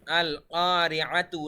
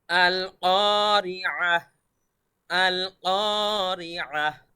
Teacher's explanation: আচ্ছা, আমরা বলি, দেখুন, গোলতা, এই যে এখানে যে দেখতে পাচ্ছেন গোলতা, গোলতা, এরকম গোলতায়ের মধ্যে যদি আমরা থামি, ওয়াকফ করি, তাহলে সেটাকে হা সাকিন করে পড়তে হবে